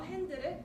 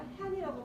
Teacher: 제일 마지막 자음이 사라져서 발음됩니다. 예를 들어 핸드를 흑인 영어는 핸드가 아니라 핸이라고 발음하는 것입니다.